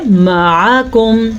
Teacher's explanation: عین کے مخرج کو ظاہر کرنا ہے، یہ واضح کر کے پڑھنا ہے، اور کاف باریک پڑھنی ہے.